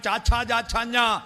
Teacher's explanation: ആ നാവ് അണ്ണാക്ക് പറ്റിച്ചിട്ട്